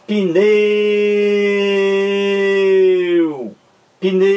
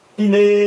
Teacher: Você demora mais no E. Pneu, ó. O U é pronunciado mais fracamente. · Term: vogal